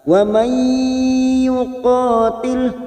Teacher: Nun sukun bertemu ya idgham bi gunnah, masuk ke huruf ya dan ditahan selama 3 harakat.